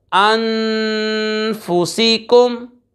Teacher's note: अनफुसिकुम हमज़ा नून ज़बर अन, फ़ा पेश फू, अनफू, सीन, ज़ेर, सी, अनफुसी, काफ, मीम पेश कुम, अनफुसिकुम। नून साकिन के बाद फ़ा हुरूफ़ इख्फ़ा में से आ रहा है, गुन्ना करके पढ़ेंगे।